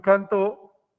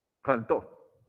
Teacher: Entonces, por ejemplo, cantó, el acento está en la última sílaba. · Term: agudas